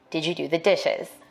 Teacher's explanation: african-american speakers may be more likely to ask a yes no question with a level tone or a falling tone for white speakers we expect a rising tone in questions like